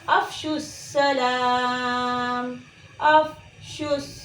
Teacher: जब हमने पढ़ा हमज़ा फ़ा ज़बर अफ, तो देखें अफ कहते वक्त मुंह से एयर बाहर की तरफ निकल रही है, आवाज़ जारी है